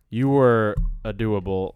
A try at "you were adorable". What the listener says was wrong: You were adorable, not a doable.